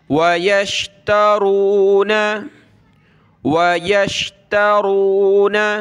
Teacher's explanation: را ہے کلرفل، اس کو موٹا کرنا ہے